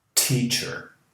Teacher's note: Para fazer essa fricção no T, você encosta a língua naquela protuberância que você tem no céu da boca, logo acima dos dentes superiores